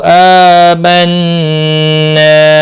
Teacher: यहाँ पर मद्दे मुनफसिल है, 3 अलिफ के बराबर खींच कर पढ़ेंगे। नून मुशद्दद पर गुन्ना होगा